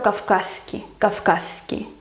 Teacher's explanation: Con Z y S se convierten en una S larga